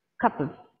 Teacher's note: The of is shortened to v.